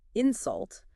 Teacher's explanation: if you put the stress on the second part, insult, it actually becomes a verb, meaning to say something rude to someone.